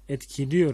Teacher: Yani E ünlümüz, düz ünlümüz dar ünlüye yani İ'ye dönüştü mü? Evet. Burada da daralma var.